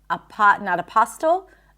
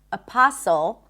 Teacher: We do not pronounce the T there.